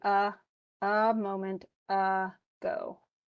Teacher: The unstressed central vowel, as in a moment ago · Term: the schwa